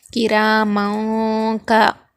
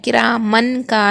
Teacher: نون کی آواز کو ناک میں چھپا کر پڑھیں گے، کراموں کا، اس طرح پڑھیں گے، کرامن کا نہیں پڑھیں گے، یہاں پر ہم اخفا کریں گے، کراموں کا۔